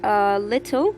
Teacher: the first L is the clear L and the second L is the dark L. There's a very slight difference in pronunciation, and if the first allophone, that is the first L, if it replaces the second L, or if the second L replaces the first L, it doesn't make any difference.